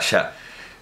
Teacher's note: la primera sibilante es la palatal, todavía, que se translitera con una S, con un acento grave, como antes la G con el acento grave. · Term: S palatal